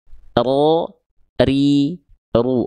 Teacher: dia getarannya sedikit aja, tapi jelas getarannya. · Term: huruf ro